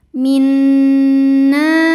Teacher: Nun adalah gunnah musyaddadah karena nun bertasydid. Cara bacanya dengung, jadi bunyi n tahan sampai ada suara masuk hidung.